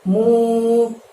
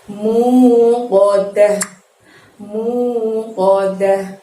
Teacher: Untuk lafaz muqaddah, mu mengucapkan mu-nya sepanjang 2 harokat juga